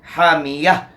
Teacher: اور نون تنوین کے بعد حروف حلقی میں سے ہا ہے، یہاں اظہار حلقی ہوگا، یعنی تنوین کا غنہ کے ساتھ نہیں پڑھیں گے، بلکہ تنوین کو اپنے مخرج سے بغیر غنہ زمانی کے ادا کریں گے. حامیہ، ہا کو وسط حلق سے ادا کرنا ہے